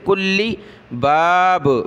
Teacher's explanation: علی ہا کو دوسری میم کے ساتھ، میم کو نون کے ساتھ ناک میں آواز پیدا کی. ہم من کلی، لام کو سخت کریں گے تشدید کی وجہ سے